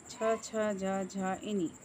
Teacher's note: వీటిని తాలవ్యాలు అంటారు తాలవ్యాలు అంటే దవడ నుండి పుట్టినవి